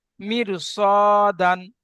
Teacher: র সাকিনে ডান দিকে জের, রকে বারিক পড়ার কথা ছিল, কিন্তু হরুফে মুস্তালিয়া সাতটি অক্ষরের মধ্যে থেকে সোয়াদ এসছে, তাই রকে পুরকে পড়তে হবে